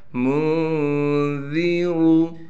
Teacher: میم کو نون سے ملائیں گے اخفا کے ساتھ، ذال کو باریک کر کے پڑھیں گے، را کو موٹا کر کے پڑھا جائے گا